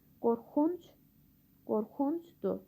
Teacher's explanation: Vurğu leksik şəkilçinin üzərindədir